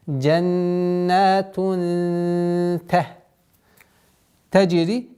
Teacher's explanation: Здесь у нас применяем правило ихфа, назализация в размере 2 огласовок, а ихфа у нас здесь мягкое.